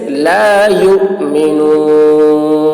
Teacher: یو میں جھٹکا لگے گا، حمزہ کے اوپر جزم ہے، تو حمزہ کے اوپر جب جزم ہو تو جھٹکا لگتا ہے